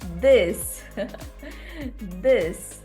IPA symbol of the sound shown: ð